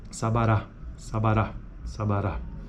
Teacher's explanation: na palavra Sabará por exemplo a primeira vogal tem acento secundário · E a terceira vogal tem acento primário